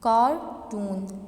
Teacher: कार्टून, देखें कार ज़्यादा नुमाया है जबकि टून उसकी निस्बत हमने क्या किया, उस पर ज़्यादा स्ट्रेस नहीं दिया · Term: प्राइमरी स्ट्रेस